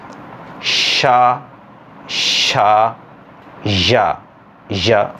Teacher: You need to make a light touch between the front part of the tongue and hard palate. A light contact should be made between them, and you should separate them slowly. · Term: palatal